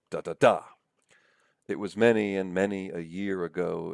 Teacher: That's a trisyllabic foot. That is a foot made up of 3 syllables where you have the stress syllable at the very end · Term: anapest